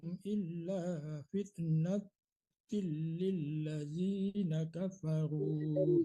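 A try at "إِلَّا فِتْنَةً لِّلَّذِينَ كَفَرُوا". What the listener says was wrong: Ulang dari illa fitnatal, bukan natil ya, tadi dibaca natil, ulang dari illanya. Illa fitnatalil, bukan natalil ya, tapi natalil.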